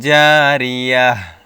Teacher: গোল তাকে হচ্ছে হা উচ্চারণ করতে হবে